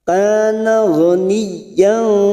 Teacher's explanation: ghani masuk ke huruf ya yang bertasdid, hanya masuk tanpa ditekan lama-lama, tanpa mendengung